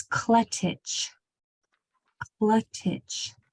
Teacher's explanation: it's just a stop and then the CH and it always comes right after a short vowel sound so